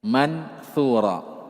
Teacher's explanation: Ikhfa samarkan perpaduan antara nun dengan tha. Ma'a baqail gunnah.